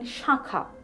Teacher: In Shakha, Chandrabindu can't occur in its initial position, but it nasalizes the vowel segment of the first syllable